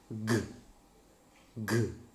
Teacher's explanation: You see, g, g. Vocal cords are vibrating, but coming from the back of the mouth. That's why this is voiced. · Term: velar voiced stop